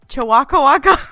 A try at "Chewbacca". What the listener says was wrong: Why did you add an extra syllable in there this time?